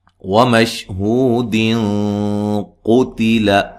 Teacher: ملانے کی صورت میں یہاں نون تنوین کا اخفا ہوگا، ٹھیک ہے۔ وَمَشْهُودٍ قُتِلَ، اخفا ہوگا، موٹا اخفا۔